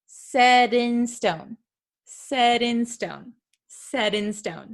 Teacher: sometimes it is something called a flap T. It sounds like a soft D sound.